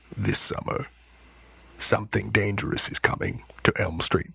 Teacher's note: He's just speaking in the lowest possible register, and he's croaking away. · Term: vocal fry